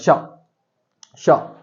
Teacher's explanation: next, शा का उच्चारण स्थान क्या है, तो देखो बेटा शा का, शा बोल के देखो, श श च छ, तो आप लोगों को ध्यान रखना कंठ से नहीं बोला जा रहा, दांत यूज नहीं हो रहा, मूर्धा यूज नहीं हो रही, तालु यूज हो रहा है